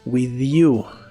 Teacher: la th de with en este caso se pronuncia vibrante esto es muy común cuando le sigue un sonido vocal with